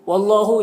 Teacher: اللہ کے لام سے پہلے واو کے اوپر زبر ہے تو اللہ کے لام کو پر پڑھیں گے